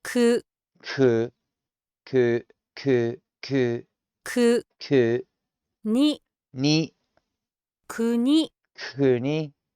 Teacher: You can hear the H, the soft, subtle H in it, going from the K into the U, into the N, and then there's a soft, very soft, subtle, breathy H towards the end of the I to tail it off.